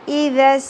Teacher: سین میں سیٹی کا element clear ہونا چاہیے